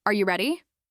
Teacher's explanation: Rising intonation usually happens at the end of yes no questions like, "Are you ready?" Your voice rises to show you're asking something that expects a simple yes or no.